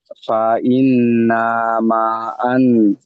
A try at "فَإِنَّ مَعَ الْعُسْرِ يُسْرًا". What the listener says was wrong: আন নেই, আল। আন নেই, আল।